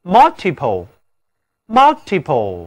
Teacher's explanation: 这里字母▁u▁读作三角的元音啊